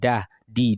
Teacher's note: dal is a light letter your mouth will be flat when you pronounce dal